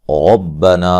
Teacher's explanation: را کو موٹا ادا کریں گے، نون پہ مد جائز ہے